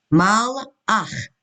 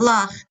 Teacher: You don't hear anything. It's an aleph. Just the vowel.